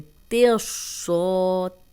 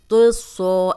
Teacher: तेसौ, तो सौ ऐसे नहीं पढ़ेंगे, ता को मोटा नहीं करना, बारीक पढ़ के सौत को मोटा पढ़ना है, सौत को दोनों बार मोटा पढ़ेंगे।